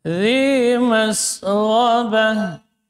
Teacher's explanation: Gha huruf rakhawah dan jahar. Gha keluar ujung tenggorokan.